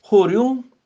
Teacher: ਹੋਰਿਓਂ ਊੜੇ ਦਾ ਉਚਾਰਨ ਨਾਸਕੀ ਹੋਏਗਾ ਬਿੰਦੀ ਨਾਲ